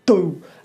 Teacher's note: if you're a cockney you kind of put more pressure behind your D. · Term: Cockney D